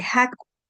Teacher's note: en el quechua el ja es un sonido velar